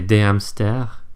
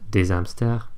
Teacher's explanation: you never liaise before an h aspiré.